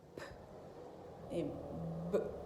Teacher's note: And they are both produced the same way. They are bilabial because they are produced in the same part, in the same point of articulation.